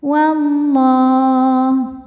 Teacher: Karena lamnya berbaris fathah panjang, maka lam kita panjangkan dua harakat. · Maka alif lam ini tidak kita baca atau disebut dengan idgham syamsi. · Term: mad thobii muqaddar